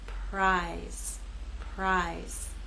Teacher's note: here p is voiceless you will not feel vibration here again R will begin without vibration and then you'll add your voice as we move into I